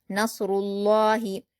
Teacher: लफ्ज अल्लाह से पहले पेश है तो हम लफ्ज अल्लाह के लाम को पुर पढ़ेंगे